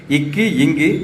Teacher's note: இக்கு இங்கு ரெண்டுமே நாவினுடைய முதல் அன்னத்தோட அடியில் போய் இருக்கும்.